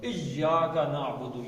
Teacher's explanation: زبان تالو سے لگ کے کھچی ہوئی آئے گی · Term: شد